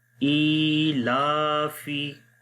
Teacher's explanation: ای اور لا دونوں کو لمبا کریں گے